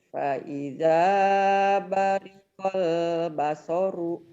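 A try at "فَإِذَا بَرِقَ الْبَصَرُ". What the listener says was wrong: Fa'idha bariqal basar. Berhenti, jangan basoru atuh. Kan berhenti. jangan basoru. Kecuali mau diterusin boleh. Kan itu ada nomor ayat. Fa'idha bariqal basaru wa khasafal qamar. Kalau mau disambung itu mah begitu mah ya.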